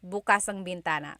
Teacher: If you say bukas, the emphasis is on the second syllable. That means open.